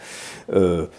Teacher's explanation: Le R est vraiment derrière, très guttural